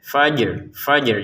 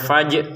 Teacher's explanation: harus ada ya unsur rnya, unsur bergetarnya ro